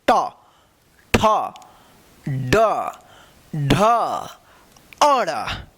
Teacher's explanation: इसका जो उच्चारण होगा मुर्धा से होगा